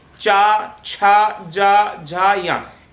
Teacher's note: तालु का उच्चारण जब आपकी जीभ आपके ऊपर हिस्से, जबड़ा का ऊपर जो हिस्सा होता है, उससे स्पर्श करती है, चा, छा, जा, झा, या, इस प्रकार से स्पर्श करती है ये जीभ, इस प्रकार से, तो वो तालु का निर्माण होता है।